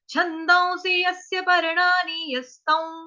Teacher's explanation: स के साथ छोटी की मात्रा लगी है, मात्रा हमारी बड़ी लंबी दीर्घ ना हो जाए, तो उसकी वजह से हमको यस्य जो है वो फटाफट उठाना है, फटाफट पढ़ना है।